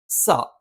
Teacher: നാവിൻറെ കൂർത്ത അറ്റം ആ അറ്റത്തിന്റെ മുകൾഭാഗം രണ്ടു വരി മുൻപല്ലുകൾക്കിടയിൽ പിന്നില ആയിട്ട് വരുകയും അറ്റം ചെറുതായിട്ട് താഴെ മുൻപല്ലിന്റെ പള്ളയിൽ സ്പർശിക്കുകയും ചെയ്യും